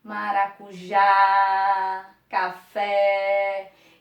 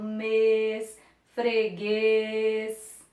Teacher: O acento agudo, que marca o som aberto, maracujá, café. E o acento circunflexo, o som fechado, mês, freguês.